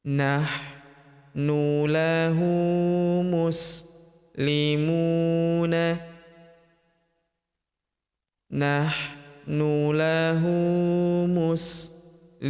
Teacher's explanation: Huruf mu kita panjangkan 2 harokat karena terdapat waw sukun di depannya